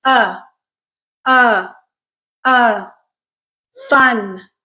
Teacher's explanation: you listen carefully to our sound uh you will notice that it is not a flat monop pitch sound there is a curve to it right it kind of Rises and then Falls at the end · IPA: /ʌ/